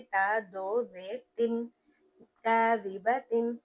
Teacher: ता पर तनवीन है लेकिन उसके बाद हरूफ हल्की में से खौ आ रहा है तो यहाँ पर हम गुना नहीं करेंगे बल्कि इजहार कर देंगे